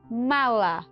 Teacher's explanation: nasal bilabial ou seja tem um impacto dos dois das duas estruturas de lábio superior e inferior